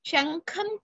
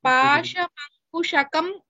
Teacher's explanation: ಶಂಖಂ ಕಾ ಇಸ್ ಮಹಾಪ್ರಾಣ ವೇರ್ as ಪಾಶಮಂಕುಶಕಂ ಕಾ ಇಸ್ ಅಲ್ಪಪ್ರಾಣ